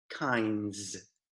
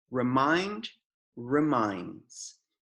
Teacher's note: Palavras que terminam com o sufixo de NDS, kinds, finds, reminds, os americanos, não sei se é igual no África do Sul, Austrália, mas a gente engole o som de D